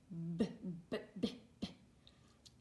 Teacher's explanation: I just say it over and over again. I repeat the sound, but I can't hold it. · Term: stop sounds